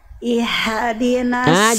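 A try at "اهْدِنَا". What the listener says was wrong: Jangan jadi hak kecil. Jangan jadi hak kecil. Bunda, ihdi itu hak besar atau hak kecil? Nah, hak besar berarti dari pangkat tenggorokan. Nafasnya jangan berbisik. Jangan ihdi, tapi ihdina dari pangkal tenggorokan lebih berat terdengarnya si nafas si suaranya.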